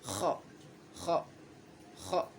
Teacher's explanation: ada sedikit kayak suara serak